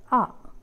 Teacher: the center of the tongue is raised to a position between open and half open this is open position and this is half open position this